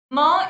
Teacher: According to place of articulation, sorry, according to place of articulation it is bilabial। हमारे सिर्फ दोनों lips काम आते हैं और नेजल, ठीक है, क्योंकि एयर एस्केप्स